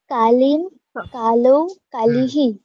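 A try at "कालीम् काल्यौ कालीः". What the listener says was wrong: কালিম কাল্যৌ, জফলা হবে একটা, তাই না? কাল্যৌ, কালিম কাল্যৌ কালিহি।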